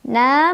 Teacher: Na mad tabi'i karena ada alif sebelumnya fathah, cara membacanya dipanjangkan 2 harokat.